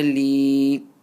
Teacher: ya sakin with the zer before it, stretch it for about 1 alif.